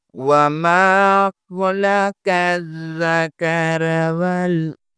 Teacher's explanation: خا حروف مستعلیہ میں سے ہے اور قاف بھی حروف مستعلیہ میں سے ہے، دونوں کو پر پڑھنا ہے، لام درمیان میں بریک ہے۔